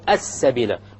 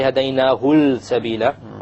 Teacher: Solar lam. It's a solar letter, therefore the lam will be dropped.